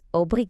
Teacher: The emphasis is on that second to last syllable.